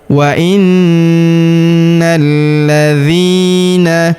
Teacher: huruf dzi kita panjangkan dua harakat karena terdapat ya sukun di depannya.